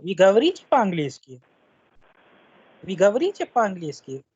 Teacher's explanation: ये एक question है, इसीलिए आखिर में जो intonation है, the pitch है sound की, it would be higher.